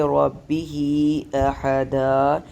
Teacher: یہاں پہ وقف کرتے ہوئے ایک الف کی مقدار میں ہم اس کو لمبا کریں گے